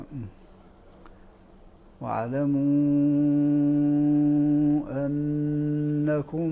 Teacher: وقع بعده همز منفصل فيمد لورش سته حركات ويمد لقالون اربع حركات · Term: المد